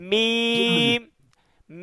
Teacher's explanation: দুই ঠোঁটের শুকনা জায়গা হতে উচ্চারিত হয় মিম